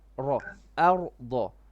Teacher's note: It's a very quick transition between making the flat letter first and then the heavy letter.